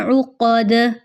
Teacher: دال کی آواز لوٹ کر واپس آئی ہے، یہاں پہ ہم نے قلقلہ کیا ہے، یہاں پہ دال پر قلقلہ کیا جائے گا۔